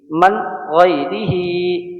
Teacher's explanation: ایک الف کے برابر ہی کو ہم کھینچیں گے